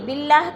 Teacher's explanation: باللہ کی اللہ باریک پڑھی جائے گی، اللہ سے پہلے لفظ با کے نیچے زیر ہے تو اللہ کو باریک کر کے پڑھیں گے